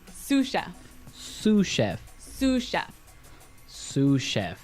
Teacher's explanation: So the S is silent because it's like a French word.